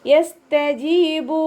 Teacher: ജീമിൻ്റെ കൂടെ യമദ് വന്നിട്ടുണ്ട്, 2 കൗണ്ട് നീട്ടിക്കൊടുക്കുക. ബ കൂടെ വന്നിട്ടുള്ളത് വാവുമദ്ദാണ്, അവിടെയും നമ്മൾ 2 കൗണ്ട് മാത്രം നീട്ടിക്കൊടുക്കുക കേട്ടോ.